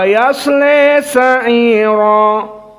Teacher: Maka qiraah Hamzah Az-Zayyat dibaca seperti qiraah jumhur, namun ada al-imalah al-kubra.